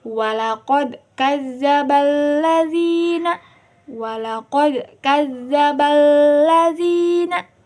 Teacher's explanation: Berarti hukum tajwidnya itu yaitu idgham alif lam syamsiyah. Karena alif lamnya bertasydid, berarti hukum pembacanya itu harus dimasukkan dari huruf sebelumnya ke alif lamnya.